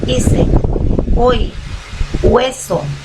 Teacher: si la H va unida a las vocales, se hace el sonido solamente como que fuese de una vocal. En el caso de E, H-E se pronuncia E.